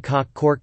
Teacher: this consists of the merger of the lexical sets thought and north